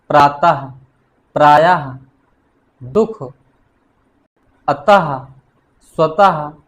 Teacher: जिस ध्वनि का उच्चारण हा जैसी हल्की श्वास के साथ होता है उसे विसर्ग कहते हैं